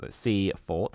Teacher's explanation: The traditional Sussex pronunciation of the name has a full vowel in each syllable, Seafort. However, outside Sussex and increasingly within, it is commonly pronounced with a reduced vowel on the second syllable, Seafort.